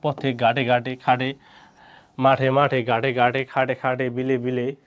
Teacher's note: শব্দের শেষ বর্ণে এর উচ্চারণ অবিকৃত মানে সংবৃত হয়